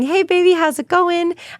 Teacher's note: When I'm talking to my kids or my husband, I typically go a little bit higher like this.